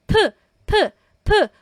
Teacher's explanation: p, p, p, breathy, mahangin po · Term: piyup